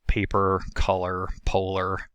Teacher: It is a mid-central lax rounded rhotic vowel that's found in unstressed syllables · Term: schwa